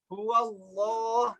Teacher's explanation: Jika lafaz Allah didahului huruf fathah, huwallah tebal.